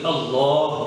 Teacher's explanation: اللہ جہاں پر بھی آئے تو لام موٹا ہوگا اللہ، لیکن اگر اللہ کے لفظ سے پہلے زیر آ جائے تو پھر لام بریک ہو جائے گا.